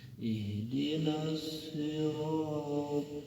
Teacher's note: Ro-nya dibaca secara tafkhim karena ro berbaris fathah, maka bacanya tebal pangkalnya diangkat. Ro madh ini atau asli ala baris fathah ketemu dengan alif, maka panjang 2 harokat.